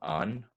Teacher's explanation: the Scots form, an, which wouldn't have the D in it